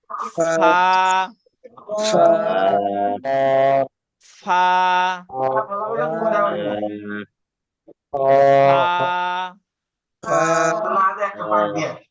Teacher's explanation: ফা দুই ঠোঁট কাছাকাছি থাকবে, কিন্তু দুই ঠোঁট মিলবে না, একটু ফাঁকা থাকবে।